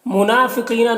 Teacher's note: منافقین، نون میں کھڑا زبر ہے، کھڑا زبر الف مدہ کی طرح ہوتا ہے تو اسے ایک الف کے برابر کھینچیں گے۔ قینا، قوف کو پر پڑھیں گے، حروف مستعلیہ میں سے ہے اور یہاں پر یا مدہ ہے تو اسے ایک الف کے برابر کھینچیں گے۔